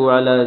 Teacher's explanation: عین گلے کے درمیان سے